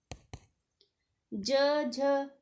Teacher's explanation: इनका उच्चारण स्थान तालू है और यह च वर्ग के वर्ण है